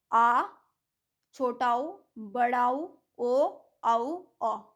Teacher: जिन स्वरों के उच्चारण में हमारी जीभ का पिछला भाग ऊपर उठता है उनको हम कहते हैं पश्च स्वर